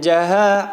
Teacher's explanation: kalau di situ fathah yang diikuti alif. Ha dibaca panjang satu ayunan.